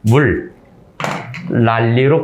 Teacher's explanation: 뒤에 있는 초성의 니은이 리을로 바뀌었다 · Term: 유음화